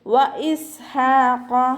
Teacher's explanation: ഹ മഖ്റജ് വരുന്നത് തൊണ്ടയുടെ മധ്യഭാഗമാണ്, സൗണ്ടിനെ വ്യക്തമായിട്ട് കൊടുക്കുക കേട്ടോ. ഹ എന്നുള്ള സൗണ്ട് തന്നെ കൊടുക്കാൻ ശ്രദ്ധിക്കുക.